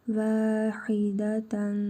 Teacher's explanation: Sonra fə hərfi gəlib. İhva qaydasına görə tənvindəki nun hərfini burnumuzda tələffüz edərək 1 əlif miqdarı uzadırıq.